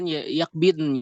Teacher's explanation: تأتي بالاستطالة في حرف الضاد ثم تقرأ النون ساكنة كاملة